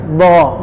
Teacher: sifat yang melekat diantaranya itu isti'la, lidahnya naik